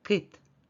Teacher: к звучить твердо А у слові кіт кіт звучить м'яко у слові кит перший звук твердий приголосний к позначаємо на звуковій моделі слова однією рисочкою А у слові кіт